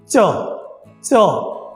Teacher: জিহ্বা এবং তালুতে কিন্তু বাধাপ্রাপ্ত হচ্ছে